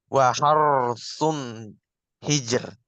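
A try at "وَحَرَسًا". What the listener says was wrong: Jangan ditekan ya. Sun, bukan. Waharosun hijar. Waharosun hijar. Jangan sun. Waharosun hijar.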